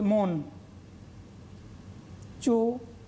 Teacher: যখনই আমরা উচ্চারণ করছি মন চোরাটা মনে হচ্ছে একসাথে উচ্চারণ করছি, মোটেই নয়, খানিকটা একবার খুব স্বল্পতমভাবে এখানে একটা বিরতি থাকছে।